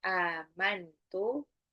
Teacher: Inni amantu amantu nun sukun ketemu ta itu adalah ikfa